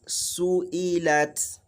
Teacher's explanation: the length of sin is the same as the length of the kasra e, and the same as the length of the fatha la